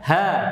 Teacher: ha hanya sampai di tenggorokan bawah saja, nggak sampai dada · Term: huruf ha